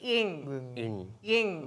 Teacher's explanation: நாக்க நடுவில் மேல் பகுதியில் நடுவில் வச்சு எங் எங் அப்படி சொல்லணும்